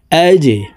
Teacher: জিম কলকুলার হরফ নিচের দিকে ধাবিত করে ধাক্কা দিয়ে উচ্চারণ করব